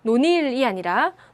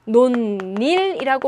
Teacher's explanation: 원래 없던 니은음이 덧났죠